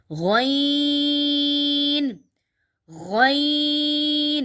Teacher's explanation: غین اور خا یہ حلق کے شروع سے جو منہ کی طرف ہے یہ ادھر سے نکلتے ہیں